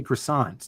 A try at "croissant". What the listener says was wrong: It's croissant. You don't pronounce the T. It's croissant.